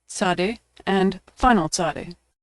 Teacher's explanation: makes a ts sound like at the end of the word pants or nuts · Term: Saudi